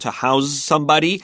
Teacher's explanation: so we actually have this verb in English to house somebody a lot of times that s will actually turn into a z sound